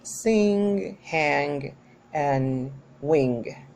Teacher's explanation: by its place of articulation is velar because the back of the tongue is encountered with the velum or soft palate